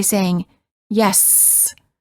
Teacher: The S sound is considered a continuent because the airflow can continue as long as we have air in our lungs.